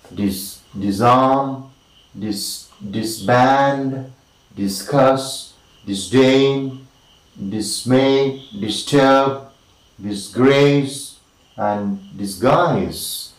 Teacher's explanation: The most important syllable is of course the second one.